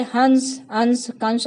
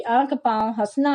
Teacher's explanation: अनुस्वार के उच्चारण में वायु नाक से निकलती है, जबकि अनुनासिक के उच्चारण के समय वायु नाक और मुंह दोनों से निकलती है। जैसे हंस, हंस अनुस्वार है, हंसना अनुनासिक।